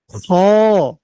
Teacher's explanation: হ টা জিহ্বাটা যেখান থেকে শুরু হয়েছে হলকটা মানে কন্ঠনালীটা যেখানে শেষ হয়েছে ঠিক সেই জায়গা থেকে খ বলুন